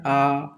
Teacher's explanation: अर्ध संवृत ए और ओ ए और ओ है। वे स्वर जिनके उच्चारण के समय मुख सबसे ज्यादा खुल जाता है। पूरा मुख खुल जाता है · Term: विवृत स्वर